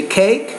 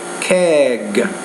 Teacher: there's no vibration in the vocal folds the vowel is shorter